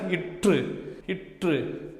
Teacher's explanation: அன்னத்தை நாக்கின் நுனி பொருந்துது மிகவும் பொருந்துதா நல்லா போய் பொருந்துதா உட்காருதா இற்றுங்கிறப்ப போய் நல்லா உட்காருதா அப்ப மேல்வாயை நாக்கின்